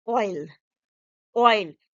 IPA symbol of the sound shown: ɔɪ